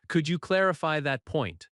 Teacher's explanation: Stress clarify and point.